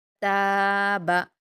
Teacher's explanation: ता पर अलिफ मद्दा है। इसको दो हरकात खींच कर पढ़ेंगे। बा पर हरकत है। इसको जल्दी पढ़ेंगे। · تا پر الف مدہ ہے، 2 حرکات کھینچ کر پڑھیں گے